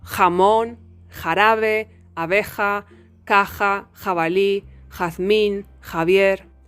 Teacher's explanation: you block the air, causing the friction in the velum